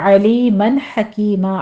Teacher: عین وسط حلق سے، ہا وسط حلق سے ، بیچ میں تنوین کا قاعدہ آ رہا ہے اظہار حلقی،